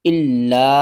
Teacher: لام کو 2 بار پڑھیں گے، سختی کے ساتھ پڑھیں گے